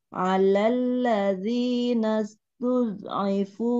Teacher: Tidak boleh terpantul karena dia mempunyai sifat istitolah. Istitolah itu memanjangkan suara dari tepi lidah kita. Dari belakang ditarik ke depan sampai makhraj lam gitu.